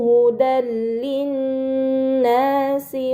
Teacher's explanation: Terdapat harakat fathatain bertemu dengan huruf lam. Ini dinamakan idgham bila ghunah. Maka fatahin dibaca secara melebur tanpa gunah yang dipanjangkan.